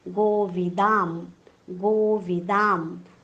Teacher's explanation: प आलेला आहे, म्हणून प वर्गातलं सर्वात शेवटचं अनुनासिक प फ ब भ म आपण अनुस्वाराच्या ऐवजी उच्चार करणार आहोत. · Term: अनुस्वाराचा उच्चार